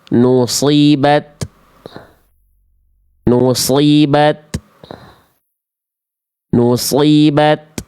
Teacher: Ta itu hams, keluar nafas sedikit, percikan nafas.